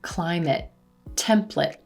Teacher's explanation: when these words are nouns and we have two syllables we're stressing the first syllable